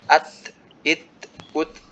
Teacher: Jadi huruf ta itu sama seperti huruf kaf, dia syiddah mahmusah. Jadi setelah menempel ke tempat tumbuhnya gigi atas ya, huruf ta, setelah itu dia terlepas, udaranya baru keluar.